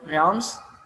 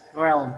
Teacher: instead of pronouncing the word realms, they pronounce it as realm without S sound.